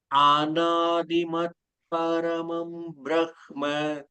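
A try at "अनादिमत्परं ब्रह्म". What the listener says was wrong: அநாதிமத் பரம் பிரஹ்ம. பரம் தான், பரமம் இல்ல.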